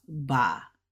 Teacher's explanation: it's a first tone, so it's flat